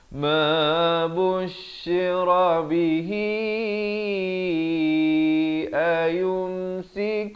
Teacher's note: Tapi kalau nak wasal, kalau kita nak sambung ha itu berbaris kasrah, dipanjangkan sekurang-kurang 4 harakat.